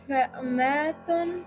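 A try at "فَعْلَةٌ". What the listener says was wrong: There's no meme in the fa ayn lams. Fa'latun. So fa letter, fa. Ayn letter replaced here.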